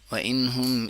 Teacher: اظہار ہوا کیونکہ نون ساکن کے بعد ہا ہے، ہا ایک حروف حلقی ہے تو اس وجہ سے ہم وَإِنْهُمْ إِلَّا يَظُنُّونَ۔